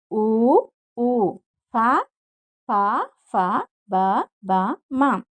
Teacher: ఓష్ట్యములు అనగా పెదవుల నుండి పుట్టినవి ఓష్ట్యములు